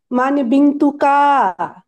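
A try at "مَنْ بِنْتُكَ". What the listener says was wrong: কা টান হবে না বিন্তুকা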